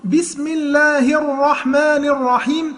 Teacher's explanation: تخلي بالك ما تبرزش شفتيك في كلمة الرحمن